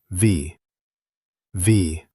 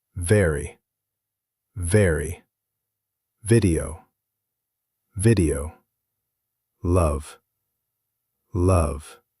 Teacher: For V, your top teeth gently touch your bottom lip, and you push air out with a little buzz. Feel your teeth on your lip.